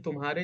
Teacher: तुम्हारे जब हम बोलते हैं तो ह पर ज्यादा जोर देते हैं। मा पर इतना जोर तो नहीं देते हैं।